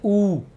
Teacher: होठों को गोल करने से ही ऊ और ऊ का उच्चारण होगा, कंठ से नहीं हो सकता। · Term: ओष्ठ्य स्वर